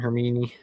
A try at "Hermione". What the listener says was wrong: You put the emphasis on the wrong syllable.